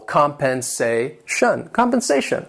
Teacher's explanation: This word has 4 syllables and the stress is on that third syllable.